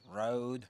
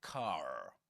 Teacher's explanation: an accent in which the R is pronounced everywhere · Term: rotic accent